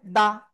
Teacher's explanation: Clear? দাল জবর দা, জিহ্বার আগা উপরে দিয়ে দাঁতের গোড়ায় লাগাইয়ে।